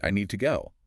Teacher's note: The to weakens to ta. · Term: weak sound